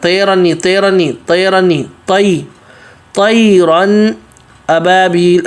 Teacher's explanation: طا موٹا، اس کے بعد یا حروف لین ہے تو طی پڑھنا ہے، طیرن ابابیل، ابھی رن پہ غنہ نہیں ہوگا، تنوین کے بعد حمزہ آ رہا ہے حروف حلقی میں سے، تو یہاں پر غنہ نہیں ہوگا۔